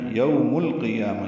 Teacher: یوم القیامہ، یو بولین ہے، ہونٹوں کو ناتمام گول کریں گے، آگے لائیں گے، میم کو لام سے ملا دیں گے، اظہار قمری ہوگا، قوف پر ہے، یا پر کھڑا زبر ہے۔